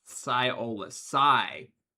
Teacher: The primary emphasis is on the first syllable.